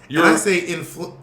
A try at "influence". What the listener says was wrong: No, it's not influ. the accent is. You're saying it wrong, bitch. The accent is not on flu.